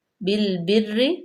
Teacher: را جو ہے وہ مشدد ہے لیکن را کے نیچے زیر ہے تو را جو ہے وہ باریک پڑی جائے گی